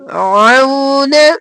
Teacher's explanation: عو عین گلے کے درمیان سے